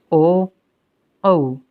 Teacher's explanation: इनको बोलने के लिए कंठ से ध्वनि आएगी और ओष्ठ के माध्यम से ये वर्ण निकलेंगे। इन्हें हम कंठोष्ठ्य भी कहते हैं।